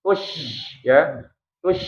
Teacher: tafasyi itu udara menyebar di rongga mulut ya itu sifat khas dari syin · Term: tafashi